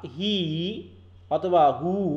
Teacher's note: যখন আমরা উ বা হি উচ্চারণ করছি তখন জিভটা উপরের দিকে উঠছে একটু হালকা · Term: হাই ভাওয়েল